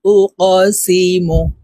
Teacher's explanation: এই কফকে ধাক্কা দিয়ে উচ্চারণ করতে হবে। কফ কলকলার হরফ। তো কফের উপরে দেখুন ত্রিভুজ চিহ্ন উপরের দিকে ধাবিত করে দেওয়া আছে।